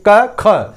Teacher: जैसे ही आप ख पे पहुंचेंगे, क ख, ख थोड़ा सा तेज बोलेंगे, ज्यादा वायु आपके शरीर से निकलेगी।